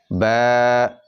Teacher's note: এক আলিফ টান দিয়ে একটু লম্বা করে পড়তে হবে